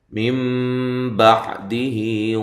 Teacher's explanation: نون کو میم سے تبدیل کر دیتے ہیں، بدل دیتے ہیں۔ بعدہ، عین کو واضح نکالنا ہے، ہا جو ہے یہ کھڑی زیر جو ہے یہ مدہ کے قائم مقام ہوتی ہے۔ · نون ساکنہ کا یہاں اخفا ہے، مع الغنہ باریک اخفا ہے. تم تا باریک ہے، میم ساکنہ کا یہاں اظہار ہے. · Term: اقلاب مع الغنہ